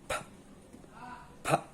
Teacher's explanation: It's bilabial, so you must put together your lips.